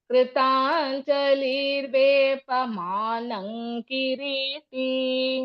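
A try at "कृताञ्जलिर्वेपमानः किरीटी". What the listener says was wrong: Manang is not there. Mana.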